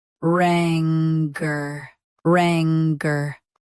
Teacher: Both US and UK have the same pronunciation of this word. Stress rang. Keep cur soft and quick.